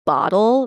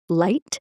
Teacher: dark L's, as they're called in linguistics, the L that appears at like the end of words like bottle versus a light L, which appears at the beginning of the words like light. Like one you're using like the tip of your tongue and one you're using like more of the back of your tongue.